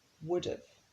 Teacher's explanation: The ending have is very light here.